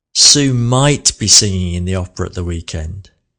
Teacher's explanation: Might was the slowest word there, wasn't it?